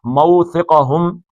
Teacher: یہ بھی لین ہے، موثقہم، یہ سا جو ہے سین نہیں نکالنا، سیٹی نہیں بجنی چاہیے